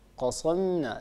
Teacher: في أولها قاف مفتوحة وبعد القاف المفتوحة عندنا صاد ساكنة، و القاف والصاد هما حرفان مستعليان مستحقهما التفخيم